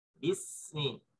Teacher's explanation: Nah, itu mengalir seperti bismi. Bismi itu sin adalah huruf yang memiliki sifat rikhwah. Huruf yang mengalir suaranya